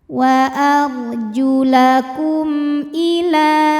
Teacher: Kemudian ada hukum izhar syafawi. Karena mim sukun menghadapi huruf selain mim dan ba, yaitu huruf hamzah. Maka mim sukun kita bunyikan dengan jelas.